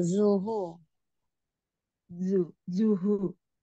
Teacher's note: di huruf zal zo ya, yang terkadang masih suka ada terdengar jimnya gitu ya. Zal zal tipis ya.